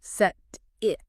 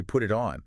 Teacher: And physically what's happening is your tongue just barely taps the ridge behind your upper teeth. It doesn't build up that strong pressure you need for a hard t. That speed and minimal contact is what turns it into a d. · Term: flap t